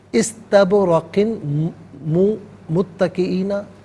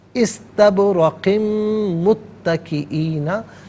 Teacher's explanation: क़ाफ की तनवीन को मीम के साथ मिलाकर मीम की आवाज़ को गुन्ने के साथ अदा करना है